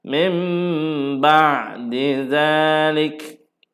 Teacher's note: Mim terus tukar kepada mim. Mim tutup mulut. Mim ba sambil dengung. Mim tu dengunglah.